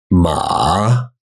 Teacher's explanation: we learn something like ma where it dips down then it rises back up right but the third tone is very rarely pronounced like that